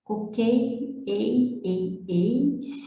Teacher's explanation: ele é decrescente, mas não é nasal, ele é oral